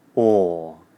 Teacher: The lips are rounded, the jaw is loose and the teeth are apart. The or is a long vowel sound. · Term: or vowel sound